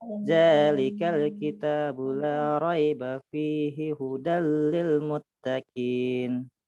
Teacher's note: nun sukun atau tanwin bertemu dengan salah satu huruf idgam bilagunnah cara membacanya dengan meleburkan nun sukun tanwin tanpa disertai dengan dengung